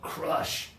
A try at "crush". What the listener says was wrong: You did more of a ah sound like crosh, and for some people that sounds like this. So the pressure is really important, okay?